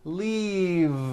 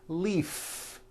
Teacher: voiced v keep the voicing going throughout the whole word and voice the v